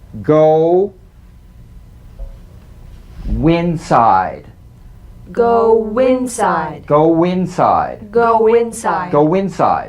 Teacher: the linking W linking words that end in the stretch vowel ooh